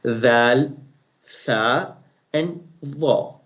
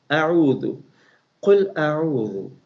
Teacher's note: When we are going to pronounce these letters, our tongue has to come out in between the teeth